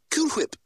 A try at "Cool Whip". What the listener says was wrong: You're saying it weird. Why are you putting so much emphasis on the H? Say whip. Now say Cool Whip.